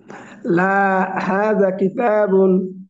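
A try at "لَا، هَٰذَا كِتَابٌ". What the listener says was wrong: লাটা বলে একটু থামতে হবে, একটুখানি থেমে এখানে একটা কমা আছে, কমাটার হক আদায় করে সামনে আসতে হবে। হ্যাঁ, বা হাযা কিতাব বলার সময় তো আর বুন বলবেন না, বলার সময় বলবেন হাযা কিতাব।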